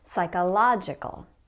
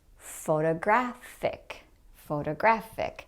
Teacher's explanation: notice that when the O is stressed it often sounds like a big wide ah